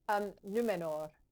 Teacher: I love the voiceless trilled R at the end. It's one of those, it's that little that you do at the end. · The little fluttered R at the end.